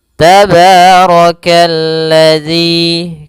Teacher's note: rnya dibaca tebal karena dia ro berharakat fathah · alif dan lam yang dia ditulis tapi tidak dibaca sehingga langsung dihurufkan ke huruf lam yang berharakat tasydid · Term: alif lam syamsiyah